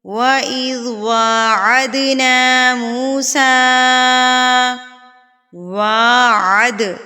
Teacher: واو کے اوپر کھڑی زبر ہے تو ہم اس کو ایک حرکت کے برابر کھینچیں گے